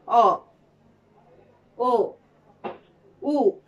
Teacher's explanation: যেমন স্বরধ্বনি উচ্চারণের সময় ঠোঁট গোলাকৃত হয়। সেই স্বরধ্বনিগুলোই হলো গোলাকৃত স্বরধ্বনি, যেমন অ, ও, উ।